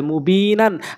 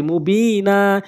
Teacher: দুইটি জবরে ওয়াকফ করলে একটি জবর বাদ দিতে হয় এক আলিফ টেনে পড়তে হয় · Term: ইওয়াজের নিয়ম